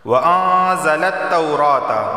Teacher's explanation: نون ساکن کے بعد زا آیا ہے تو اخفا والا غنہ ہوگا، یعنی زبان کے نوک اوپر کے تالو سے نہیں لگے گی۔